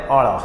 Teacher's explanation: જીભ વળે થડકો વાગે અને પાછો આવે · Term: થડકા વાળો